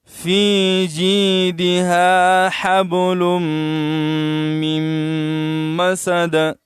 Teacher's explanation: اور مسدین، مسدین جو ہے دال کے نیچے دو زیر ہے، تو یہاں ہم نے دو زیر کو نہیں پڑھا، دال کو ساکن کیا ہے، اور اس میں قلقلہ بھی کیا ہے، تو ٹھہرنے کی وجہ سے اس دال کے اوپر سکون آ گیا، ہم نے ساکن کیا.